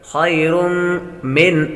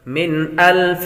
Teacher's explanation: خیر تنوین کے بعد میم حروف یرملون میں سے آ رہی ہے، غنہ کریں گے